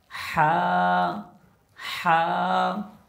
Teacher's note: লম্বা হা উচ্চারণ করা সময় গলার ভিতরে একটা শোষ যেন আওয়াজ হয়